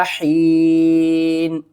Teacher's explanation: وقف کی صورت میں نون کے نیچے جو 2 زیر ہیں نا ان کو آپ نے ختم کرنا ہے، نون کو ہم ساکن کر دیں گے